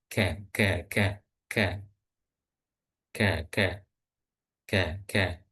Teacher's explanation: Kemudian huruf kaf itu lidah bagian dalam tapi agak naik sedikit.